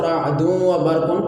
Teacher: دال جو ہے دو پیش والی وہ مدغم ہے، واو مشدد یہ مدغم فی ہے، دال کا واو میں ادغام کیا ہے، تو اس لیے ہم اس کو رعد و برق پڑھیں گے، یہاں بھی ادغام مع الغنہ ہو رہا ہے۔